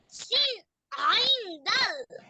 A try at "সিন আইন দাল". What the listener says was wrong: দাল টান আছে না, টান দিয়ে পড়বা। সিন আইন দাল, এভাবে।